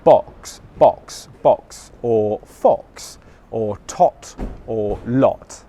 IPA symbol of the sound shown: ɒ